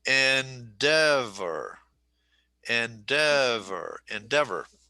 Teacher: There are 3 syllables, accent on the second syllable, endeavor. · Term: 3-2 word